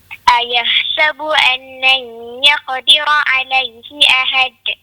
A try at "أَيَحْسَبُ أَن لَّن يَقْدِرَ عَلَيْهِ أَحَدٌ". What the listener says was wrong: Jangan ditekan, ya. Kalau kita tekan ataupun kita lambat nak tendang makhraj dia seolah-olah macam ada sabdu. Ahad. Macam kita tekan dia seolah-olah macam ada dua dal. Jadi di sini dia terlepas terus. Ahad gitu.